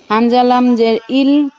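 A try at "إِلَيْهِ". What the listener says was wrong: হামজা লামজের না, আইন লামজের। আইন লামজের ইল।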